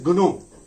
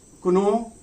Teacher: Voiced velar plosive consonant. Now this voiced plosive consonant became voiceless velar plosive consonant. Voiceless velar plosive consonant.